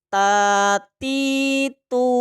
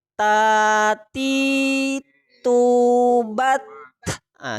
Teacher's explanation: itu bukan Qalqalah ya tapi hentakan nafas